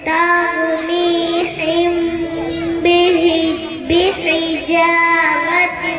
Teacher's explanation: میم ساکن کے بعد با آئے تو غنہ کے ساتھ اخفا ہوگا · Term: اخفاء شفوی